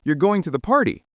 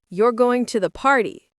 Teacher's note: with your voice falling, it's a statement